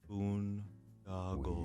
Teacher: Boondoggle, 3 syllables. Boon, da, go. Stress on the first syllable.